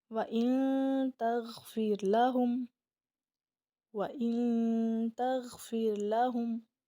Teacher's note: ہم نے پورا غنہ نہیں کرنا بلکہ نون کی آواز کو ناک میں چھپا لینا ہے. اس کو اخفا کہتے ہیں.